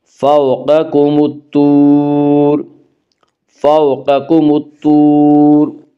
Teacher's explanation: واو مدہ، واو مدہ وہ واو جو ساکن ہو اور اس سے پہلے پیش ہو، واو مدہ کو ایک الف کے برابر کھینچ کر پڑھیں گے۔